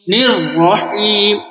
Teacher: اس میں ایک بات یاد رکھیں، جب تشدید کو 2 مرتبہ پڑھتے ہیں، یہ را 2 مرتبہ ہے. پہلی والی را جو ہے وہ نون سے مل رہا ہے تو را سے پہلے زیر ہے تو اس کو باریک پڑھیں گے.